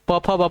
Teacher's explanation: प, फ, ब, ब क्या है ओष्ठ है